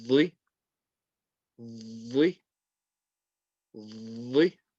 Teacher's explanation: The letter dha, the tip of the tongue touching the tip of the top two teeth. Lots of pressure there, and release it